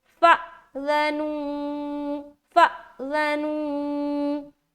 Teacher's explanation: अब हमजा के ऊपर सुकून है तो जाहिर बात है कि हमजा के ऊपर जब भी सुकून आएगा, पूरे कुरान पाक में कहीं पर भी हमजा के ऊपर सुकून आएगा तो हमजा साकिना का झटका करना पड़ता है, वहां पर आपको झटका देकर पढ़ना है। जैसे कि यहाँ पर हम क्या पढ़ेंगे, फ़अज़नू, फ़अज़नू, ज़नू, वा मद्दा भी कर रहे, ज़ाल को हम नरमी के साथ बगैर सीटी के भी अदा कर रहे हैं।